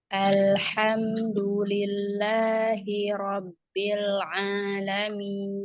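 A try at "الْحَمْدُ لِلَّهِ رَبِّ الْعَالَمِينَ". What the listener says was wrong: Ya, bagus lagi Robbil Kak. Robbil, bil. Bukan, kurang bunyi i-nya. Tadi masih Robbil, Robbil. Sedikit sekali, tapi kalau bagus lagi ke i-nya sempurna.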